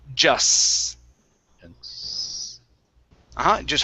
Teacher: all i want you to say is an s at the very end